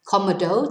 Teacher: Cómodo tells us to stress the first syllable rather than the penultimate syllable